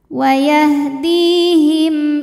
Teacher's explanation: huruf Dal panjang dua harakat waahdiim him hukumnya izhar syafawi karena mim sukun menghadapi huruf selain mim dan ba yaitu Hamzah maka mim dibaca jelas